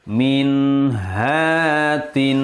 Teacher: Sukun bertemu ha. Maka membacanya harus Jelas. Jangan mendengung. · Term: izhar halqi